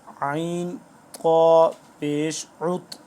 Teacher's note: عین کو سختی سے گلے سے نکالنا ہے، قا موٹا ہے